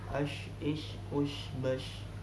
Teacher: makhrajnya di mana huruf shin? Yaitu tengah lidah.